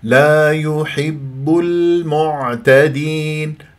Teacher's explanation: اللام قمريه يجري فيها صوت فتره زمنيه بسيطه لان من حرف التوسط